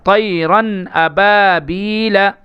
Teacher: ہمیں یہاں اظہار کرنا ہے، یعنی حروف حلقی کے 6 حرفوں میں سے یہاں پہ حمزہ آ رہا ہے، اس کی وجہ سے ہمیں یہاں پہ اظہار کرنا ہے، ناک میں آواز بالکل نہیں روکنا ہے۔